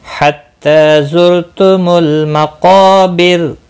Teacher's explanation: मक़ा क़ाफ और अलिफ दोनों पूर्व पढ़े जाएंगे। क़ाफ मुस्तालिया है, मुस्तालिया के बाद अलिफ उसी कलमे में आया है, पूर्व पढ़ा जाएगा। · ता के ऊपर खड़ी ज़बर है, एक अलिफ के बराबर खींच कर पढ़ेंगे।